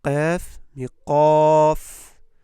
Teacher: Le qaf, on le grossit parce que c'est une lettre emphatique.